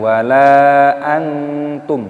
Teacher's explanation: Lamnya dipanjangkan, mad jaiz munfasil dipanjangkan 5 ketukan, dan di sini ada nun sukun yang bertemu dengan huruf ta. Ini hukumnya dibaca ikhfa. Cara membacanya yaitu disamarkan.